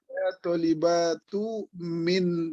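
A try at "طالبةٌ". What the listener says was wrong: Kenapa nggak ditanwin, Pak? Tolibatun.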